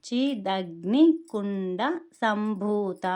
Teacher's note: ఇక్కడ డా అనే దానికి ఒత్తు అనేది ఇవ్వకూడదు. భూ అనేది దీర్ఘం ఉంది. తా అనే దానికి కూడా దీర్ఘం ఉంది.